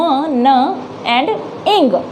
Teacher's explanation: नोज में आती है, नोज के थ्रू आती है, नेजल कैविटी के थ्रू आती है, जिससे हमारी न वाली साउंड्स बनती है